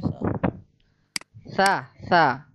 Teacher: Ujung lidah, ya, ujung lidah yang menyentuh ujung dua gigi seri atas. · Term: huruf sa